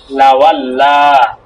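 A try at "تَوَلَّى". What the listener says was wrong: লাওয়াল্লা হবে কেন? তা, এটা তা। তাওয়াল্লা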